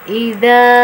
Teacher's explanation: Dan hati-hati pengucapan pada huruf dzal ini. Huruf ini keluar dari ujung lidah kita, menempel atau mengenai ujung 2 gigi seri atas kita. Jadi kayak tergigit ya.